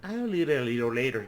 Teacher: This is called a dark L. A dark L is like a O, but it's not necessarily a O. It's, you put the tongue back.